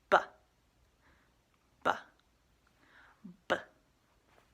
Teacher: bottom lip mmm a B sound is what's called bilabial sounds making both of your lips come together